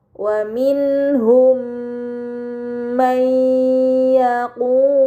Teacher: Kemudian pada kata waminhum may yaqu terdapat mim sukun bertemu dengan huruf mim ini dinamakan idgham mimi. Maka mim sukun dibaca secara melebur dengan gunah yang dipanjangkan